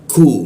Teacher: Lidahnya diturunkan sehingga membaca ku-nya itu ada hembusan.